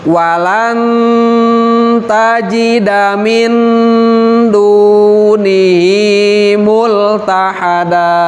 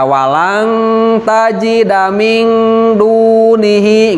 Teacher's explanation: Nah, tapi di sini walaupun itu hurufnya huruf ikhfa, tapi kalau huruf ada nun sukun atau tanwin ketemu dengan huruf ta, terus ketemu dengan huruf dal, ketemu lagi dengan huruf to, maka walaupun ikhfa tapi harus mendekati ke huruf nun cara menggunakannya. Karena ini ikhfanya termasuk ke dalam ikhfa akrab, gitu kan.